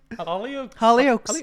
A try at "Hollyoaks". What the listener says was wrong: Your focus is on the oaks and not the Holly.